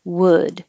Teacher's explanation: wood is trickier because you do have to start rounded and then unround